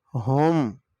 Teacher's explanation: ہا سینے سے آواز آئے گی